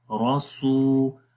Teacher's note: میں آپ کو رولز بھی بتا رہا ہوں ساتھ میں، جب بھی واو کے اوپر جزم آئے اور اس سے پہلے پیش ہو تو وہاں پر 1 الف کے برابر لمبا کرتے ہیں، تو یہاں پر بھی لمبا کریں گے. را کو موٹا پڑھیں گے، سین کو لمبا کریں گے، راسو. اور سین کو لمبا واو کی وجہ سے کریں گے کیونکہ یہاں پر واو مدہ ہے، مدہ کا مطلب ہوتا ہے لمبا کرنا، تو 1 الف کے برابر لمبا کریں گے، راسو.